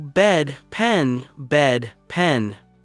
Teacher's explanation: The EH sound is more contained, the mouth doesn't open so much